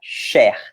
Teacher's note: A gente vai pronunciar cher, com o E aberto.